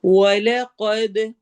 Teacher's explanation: واو میں ہونٹ گول ہوں گے ، قد قاف کو ہیوی کرنا ہے، حروف مستعلیہ میں سے